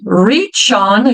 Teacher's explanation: já emendo ch com o on. Então, veja que o CH no final da palavra, ele vai ficar um som forte também.